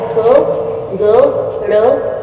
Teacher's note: इनको बोलने में आप महसूस करेंगे कि हमारा जो है कम श्वास लग रहा है, कम एनर्जी लग रही है। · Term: अल्पप्राण